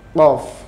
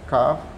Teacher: Kalau qaf itu bunyinya mulutnya sambil agak manyun. Kalau kaf itu biasa aja mulutnya dibuka, ya, nggak pakai manyun.